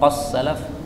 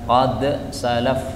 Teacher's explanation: boleh dibaca dengan idgham qas salaf, boleh juga dengan izhar qad salaf